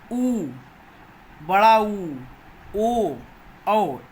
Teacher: ऐसे स्वर जिनके बोलने के समय हमारी ओठों की आकृति गोल हो जाए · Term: वृत्ताकार स्वर